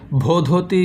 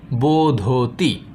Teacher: পরপর দুটি মহাপ্রাণ ঘোষ ধ্বনি ছিল তাই ভ পরিবর্তিত হয়ে সংস্কৃতে ব হয়ে গেছে যার কারণে ভধতি স্থানে সংস্কৃত হয়েছে বোধতি আশা করব আপনারা ব্যাপারটিকে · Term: গ্রাসম্যানের সূত্র